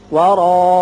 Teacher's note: را پر ہوگا اور اس کی وجہ سے الف بھی پر پڑا جائے گا.